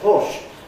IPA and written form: hɔːʃ (horse)